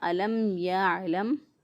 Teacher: جب میم ساکن کے بعد میم اور با کے علاوہ کوئی اور حرف آ جائے تو وہاں پہ ہم اظہار کر لیتے ہیں، میم ساکن کی آواز کو ظاہر کر کے پڑھتے ہیں